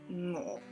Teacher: So song, song, and then drop the front so sound, so it just becomes ngo. It's a nasal sound that starts far back in your mouth.